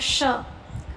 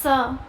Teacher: ऐसे ही इन्हें ऊष्म व्यंजन इसीलिए बोला जाता है क्योंकि इन्हें बोलते समय आपके मुंह के अंदर मुंह जो वायु है वो रगड़ खाती हुई बाहर आती है। · इन्हें बोलते समय आपके मुंह के अंदर जो वायु है वो रगड़ खाती हुई बाहर आती है। जैसे आपने बोला श या आपने बोला स, है ना, तो ये इस तरीके से रगड़ खा रही है हवा, इसीलिए इसको हम क्या बोलते हैं?